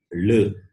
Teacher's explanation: just above the upper teeth the tongue is stretched and the sound is produced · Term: dental